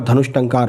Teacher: विसर्ग के बाद में जब आधा टा या ठा आने पर विसर्ग का मूर्धन्य सा हो जाता है